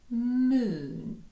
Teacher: Рушаємо з посмішки до поцілунку. Moon. Звук тягнемо, тому що він довгий.